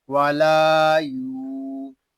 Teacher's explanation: لام الف زبر لا، والا، یا واو پیش یو، والا یو، لام کو ہم ایک الف تک کھینچ کر پڑھیں گے اور یا کو بھی ہم ایک الف تک کھینچ کر پڑھیں گے